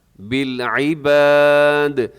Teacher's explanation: بالعباد پہ جب آپ وقف کریں گے تو آخر میں جو دال ہے، دال قلقلہ ہو جائے گا. قلقلہ کا مطلب یہ ہوتا ہے کہ اس کی آواز کو آپ نے ڈبل کرنا ہے.